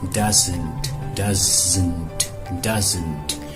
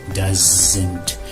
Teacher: One of the most important things to understand is Z, the Z sound, Z, is a result of pressurizing and adding vibration to an S sound